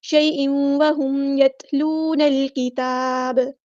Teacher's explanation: میم ساکن پر اظہار شفوی ہوگا، ٹائم نہیں دیں گے